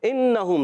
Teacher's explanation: نون مشدد ہمیشہ ایک الف کا غنہ ہوگا